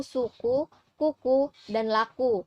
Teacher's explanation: Selanjutnya rahang atas dengan posisi lidah bagian belakang ada bunyi U